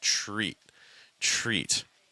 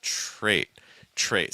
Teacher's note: when you see a t and an r that link together it makes almost like a CH sound like a ch ch with a little r attached to it